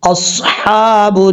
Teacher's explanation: حمزہ صاد زبر اص، حا کھڑا زبر حا، با نون پیش بن، اصحاب، نون الف زبر نا، را زیر ری۔ یہاں پر صاد حروف مستعلیہ میں سے پر پڑھا جائے گا